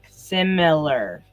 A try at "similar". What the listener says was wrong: If you spell it, there's no U in it.